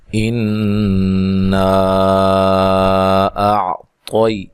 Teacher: حمزہ کو تحقیق سے عین کو واضح نکالنا ہے، طا کو خوب موٹا کرنا ہے، موٹے حروف میں سے ہے۔